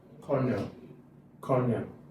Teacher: And then the stress is on where? The stress is on the first syllable.